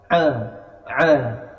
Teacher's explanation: Jadi huruf Ain makhrajnya atau tempat keluarnya ada ditenggerokan a a ya agak ditekan asalamualaikum Ya waaikumalam tidak Assalamualaikum Asalamualaikum